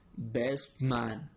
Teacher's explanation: when a word ends in a sound like t, t. It changes to p, p before a sound m, n, b, b, or p, p. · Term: assimilation